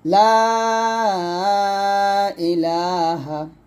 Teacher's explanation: লাম আলিফ জবর লা, তিন টান দিবেন।